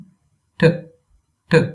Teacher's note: A hard T. Curl your tongue back and add a puff of air.